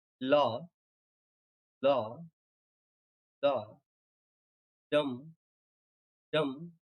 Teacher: Sprung rhythm is a group of stressed and unstressed syllables together, like law, law, law, dum, dum, this way. Means stressed, stressed, stressed, unstressed, unstressed. This kind of syllables are called sprung rhythms.